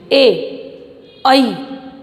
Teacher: आप ए और आई को स्पीक कीजिए, ए आई। ठीक है, आई हमारी जिह्वा साइड में से ऊपर तालु को स्पर्श कर रही है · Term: कंठ तालव्य